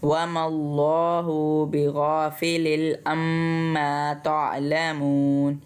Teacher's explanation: ہم نے اللہ کے لام کو موٹا پڑھا کیونکہ اس سے پچھلا جو لفظ ہے میم، اس کے اوپر زبر ہے